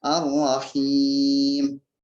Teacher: Nah, jadi di sini ada mad tabi'i yang kemudian disukunkan gitu, yang menjadi Ar-Rahim, maka disebut dengan mad arid disukun gitu. Jadi mad yang disukunkan sehingga panjang bacanya sekitar 4-6 harokat.